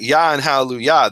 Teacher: the emphasis is on the yah